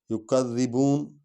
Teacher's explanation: ذال کو اس پر زور دیں گے کیونکہ سٹریس آئے گا، شد والا حرف ہے۔ یکذبون بو کو تھوڑا لمبا کریں گے کیونکہ آگے واو ہے۔